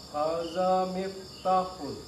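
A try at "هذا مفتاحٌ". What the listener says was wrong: Panjangkan di ta, Pak. Ya, cuma za-nya dilunakkan, Pak. Kalau jangan sampai jadi zai. Hadza miftahun.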